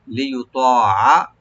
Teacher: ত এখানে কোনো এক আলিফ টানবেন শুধু, এবং রাইট দিবেন একটু ডিপ করে। লিউতাআ, আইনে কোনো টান নাই, শুধু রাইট দিয়ে পড়বেন গলার মাঝখান থেকে